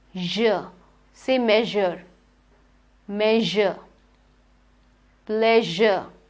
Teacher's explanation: Your tongue goes to that ridge, the teeth ridge, z, j. The tongue goes somewhere between the hard palate and the teeth ridge, somewhere in between. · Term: j sound